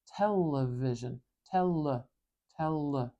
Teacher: we put our tongue up behind our top teeth and we make sure our throat is vibrating and the air splits around where our tongue is touching and flows out the sides of our mouth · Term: l sound